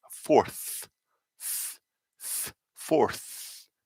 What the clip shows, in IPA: fɔːθ